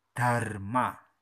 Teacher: Ujung lidah digigit dikasih abab Dharma.